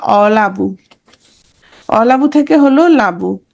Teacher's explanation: শব্দের আদি থেকে কি হয়েছে, স্বরটা লোপ হয়েছে। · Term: আদি সরলোপ